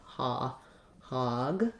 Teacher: thinking of it as the ah with rounding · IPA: /ɔ/, ɔ